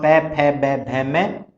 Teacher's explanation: प फ ब भ म और उपधमानीय, इनका उच्चारण स्थान होता है ओष्ठ।